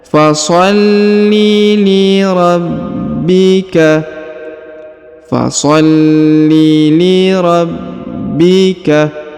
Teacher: huruf ba ditahan dan ditekan karena terdapat tanda tasdid di atasnya